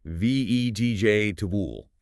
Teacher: That middle E and A sound kind of gets squeezed together or almost disappear entirely.